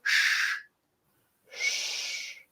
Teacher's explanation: very similar to English, except with the sides of your tongue against the top of your mouth. So shh, as in shush.